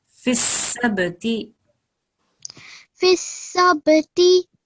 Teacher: when we have a ba with a schoon, then we have to make a slight jerking sound there